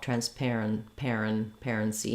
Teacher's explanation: You see how quickly that unstressed syllable goes by, and not a lot of vowel sound there.